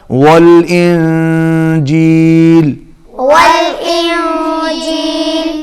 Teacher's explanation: آواز ناک میں جائے گی، اخفاء ہوگا نون پر